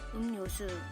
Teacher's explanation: In these words, the r sound changes to an n sound.